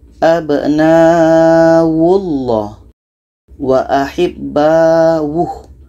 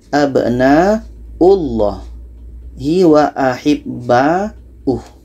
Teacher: Padahal yang betul adalah ketika ada hamzah di atas waw, maka yang dibaca adalah hamzah